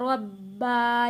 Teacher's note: یہاں پہ با ہم نے سختی کے ساتھ تھوڑا رک کر ادا کرنا ہے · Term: تشدید